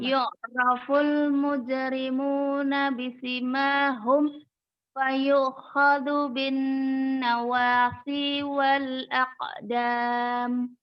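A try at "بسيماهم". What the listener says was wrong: Isi mahum sinnya 2 harokat ya, tadi kecepatan. Bisi mahum. Bisi mahum.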